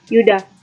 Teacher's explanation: 23. Y dengan bunyi semivokal laminopalatal bersuara